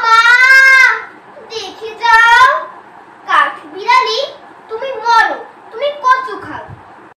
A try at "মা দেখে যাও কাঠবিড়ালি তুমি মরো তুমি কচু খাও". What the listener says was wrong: চন্দ্রবিন্দুর উচ্চারণটা কেন যেন হচ্ছে না এটা আরেকটু চেষ্টা করতে হবে তাহলে আবৃত্তি আরো শ্রুতিমধুর হবে